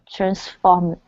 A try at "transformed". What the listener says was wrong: Instead of transformed, okay, it's transformed. Okay, almost. So with our ed endings, we cannot pronounce this e on this word. There are two instances when we can. When a word ends with a d sound, okay, like handed, I handed the file in, that word hand, to hand something, okay?